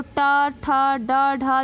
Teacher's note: ऊपर वाले मसूड़े को टच करे ना हमारी जिह्वा, तो वो हो गया मूर्धा।